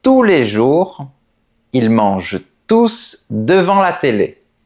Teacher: En revanche, quand on dit « ils mangent tous devant la télé », le mot « tous » fait référence au sujet « il » qui est avant. Donc, on prononce le S.